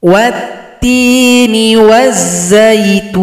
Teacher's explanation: lam tidak dibaca karena telah tasydid atau gabung pada huruf ta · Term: idgham syamsiyah